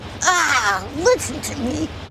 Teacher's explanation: Most people recognize her for her distinctive, breathy voice